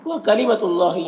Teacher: اللہ کے لام سے پہلے تا کے اوپر پیش ہے تو اللہ کے لام کو پر پڑھیں گے